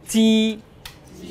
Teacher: আপনি ফিল করবেন কি কোন বাতাসের বেগ পাচ্ছেন না